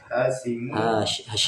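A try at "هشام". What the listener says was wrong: Hisham, bukan Hashim. Hisham. Kalau Hashim itu hanya yang panjang. Kalau sya yang panjang berarti dibaca Hishamun.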